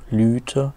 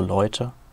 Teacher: Ein Beispiel für eine Diphthongierung. Lüte wird zu Leute.